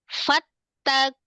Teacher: Lamnya itu makhrajnya tetap di lam. Hanya dia di lafuz jalalahnya karena dia tebal.